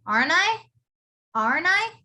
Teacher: And the next one, like previously when we were saying shouldn't I, when you have the letter I, you would actually pronounce it as nigh. When you're asking a question, you would say nigh.